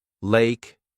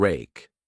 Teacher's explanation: For the L sound, put the tip of your tongue on the roof of your mouth behind your upper teeth. For the R sound, pull the tongue back without touching the roof of your mouth.